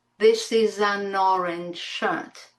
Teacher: And also the N in an gets linked to the vowel sound after it.